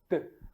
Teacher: surda virar uma sonora o t é um som surdo T as cordas vocais elas não tremem